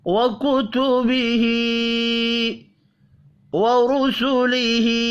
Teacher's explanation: اس میں را پیش کی وجہ سے پر پڑھا جائے گا اور ہا کو کھڑی زیر کی وجہ سے 1 الف کے برابر کھینچ کر پڑھیں گے۔